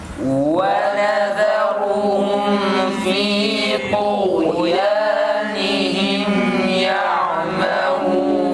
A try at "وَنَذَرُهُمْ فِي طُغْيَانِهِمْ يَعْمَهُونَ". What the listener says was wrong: Ayn harfi biraz da boğazdan net çıksın fakat kalkale yapmadan tekrar. Ve nezâruhum kelimesi ra tam net kalın çıksın, güzel çıksın. Zal ince yalnız. Ve nezâruhum değil. Ra'dan dolayı zalı da kalın yapmayalım. Ve nezâruhum